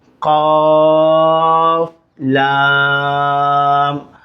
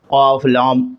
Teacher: قاف تو موٹا بھی نکالا جائے گا اور لام جو ہے باریک نکالا جائے گا. یہ نہیں کہ قاف لام، لام کو بھی موٹا اور قاف کو بھی موٹا.